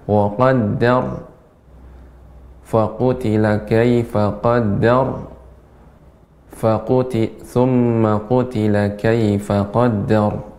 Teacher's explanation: Kemudian pada kata ayat ke-18 wa qaddar, nah ini juga dibaca dengan tebal namun tidak memonyongkan bibir, tidak wa qaddar, ya.